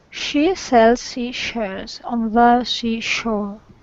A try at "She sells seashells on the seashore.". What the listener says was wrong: The only thing there is on that second C, you kind of went shh. Make sure it's C with that Yeah. Shore.